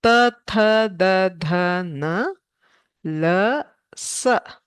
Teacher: For all these, the danta teeth are the uchcharana sthana. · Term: dantaha